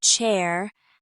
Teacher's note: Ch, as in chair, has a quick burst of air.